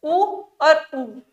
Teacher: जब हम उ बोलते हैं तो हमारे होठ आपस में उठते हैं, मिलके उठते हैं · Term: होठों से